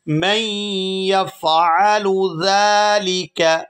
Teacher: یہاں میم کو یا مشدد کے ساتھ ملائیں گے تو غنہ کریں گے